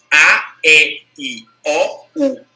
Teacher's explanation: E o formato do lábio, que às vezes é muito aberto, às vezes é muito fechado, é um pouco mais fechado, né? Então a gente começa com mais aberto, que é o A, e termina com mais fechado, que é o U